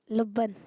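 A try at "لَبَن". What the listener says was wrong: लब्बन? लब्बन नहीं कहते भाई, बा पे तस्दीद नहीं है। लब्बन नहीं कहते। बाप पे तजदीद नहीं है। आप हर्फ सही बता रहे हैं लेकिन बाप पे तजदीद लगा रहे हैं। आप तजदीद नहीं लगाएं।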